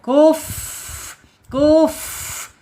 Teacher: sehingga akan muncul sifat hames. Itu ya ketika makhrajnya ujung gigi seri atasnya menyentuh perut bibir bagian bawah secara otomatis akan muncul sifat hames.